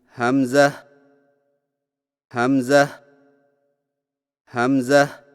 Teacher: حمزہ کی ادائیگی میں ہا کو بغیر کھینچے میم کے ساتھ ملائیں اور میم میں آواز کو لمبا نہ کریں